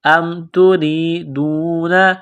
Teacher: را کے نیچے زیر ہے، را کو باریک کرنا ہے، یا کے ساتھ پلس کرنا ہے.